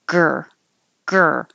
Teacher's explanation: your back of your tongue is making the G as the front of the tongue is curled back for the r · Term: gr